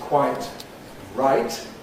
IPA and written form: ˈkwaɪt ˈraɪt (quite right)